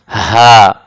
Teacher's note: কন্ঠনালীর শুরু থেকে উচ্চারণ হবে হা।